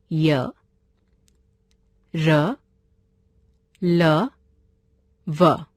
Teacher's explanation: अंतस्थ व्यंजन जिन वर्णों का उच्चारण स्वरों और व्यंजनों के मध्य का होता है वे अंतस्थ व्यंजन कहलाते हैं। इनका उच्चारण करते समय जीभ मुंह के किसी भाग को भी पूरी तरह स्पर्श नहीं करती।